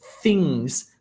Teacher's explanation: my teeth actually sit on top of my tongue, and I'm saying things.